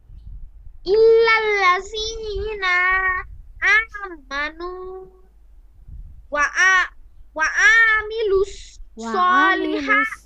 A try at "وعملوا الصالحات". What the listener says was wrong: টান হবে না ওয়ামিলুস